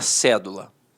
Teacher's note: a palavra cédula notoriamente é uma proparoxítona a sílaba tônica está na antepenúltima sílaba